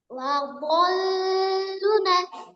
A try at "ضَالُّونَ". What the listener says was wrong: আবার বলেন লাদল্না লাদতে দদের উপর টান আছে, দল লামে টান নেই, দদে টান আছে। লাদল্লুনা।